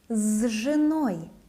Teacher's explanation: voiced ж makes s sound as z.